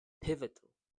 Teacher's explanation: so the word stress is in the first sound